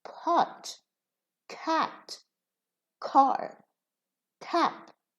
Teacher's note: Aspirated consonants are consonants, three consonants, ta, pa, ka, and we pronounce these with a puff of air when they occur at the beginning of the word, like pot, pot, as if there is a ha after the p, after the pa, pot, cat, car, tap. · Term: aspiration